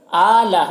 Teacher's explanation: فَاذْكُرُوا، را کے اوپر پیش ہے، را کو پر پڑھیں گے، اور واو میں جو مد ہے مد منفصل ہے۔ آلہ، حمزہ میں کھڑا زبر ہے، ایک الف کے برابر کھینچیں گے